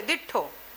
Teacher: વ્યંજનને પણ બેવડાવવાનું વલણ આ ભાષામાં જોવા મળે છે